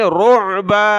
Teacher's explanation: منہم رعبا، منہم را عین پیش رعبا دو زبر بن، رعبن جب رکیں گے تو عین نکالیں گلے سے